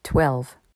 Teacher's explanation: Contrairement à two, ici le W se prononce.